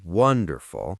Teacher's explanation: wonderful has the stress on the first syllable, wonderful.